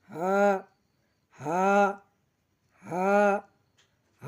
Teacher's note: হা, হা, হা, হা আমরা হলকের শুরু হইতে উচ্চারণ করব